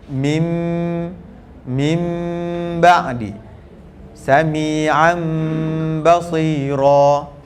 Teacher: Dengung dia tu akan menjadi makhraj mim. Sebab tu dia letak mim kecil. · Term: iqlab